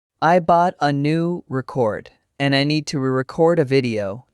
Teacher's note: Noun stress first syllable, verb stress second syllable.